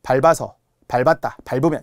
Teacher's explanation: 원래는 길어야 되는데 모음 어미가 오면서 짧은 소리가 난다는 거예요.